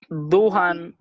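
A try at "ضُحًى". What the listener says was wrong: হ্যাঁ হায়ের উচ্চারণটা বিশুদ্ধ হবে এটাই যখন আমরা থেমে পড়বো উচ্চারণ হবে দুহা, যেমন কোরআনের শব্দ তারপরে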